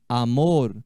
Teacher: o r em espanhol é uma letra sempre vibrante